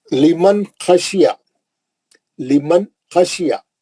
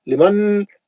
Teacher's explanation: نون ساکن کا اظہار حرف خا، نون ساکن کا اظہار حرف خا. لیمن خشیا، جتنا چھوٹا پڑھے نون کو اتنا صحیح رہتا، اتنا اظہار اچھا ہوتا. آپ ذرہ بھی لمبا کرے نا نون کو، لمن بول دیے تو غلط ہوگا، غنہ ہو جاتا.